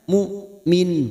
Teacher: Mu'min hamzah sukun jelas tegas sitdah sifatnya